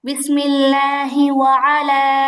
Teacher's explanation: ওয়া আর আইনের মধ্যে টান হবে না, টানটা হবে লামের মধ্যে।